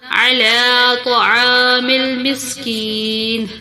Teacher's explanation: طا کو پر کر کے پڑھیں گے، تا کی طرح باریک نہیں پڑھیں گے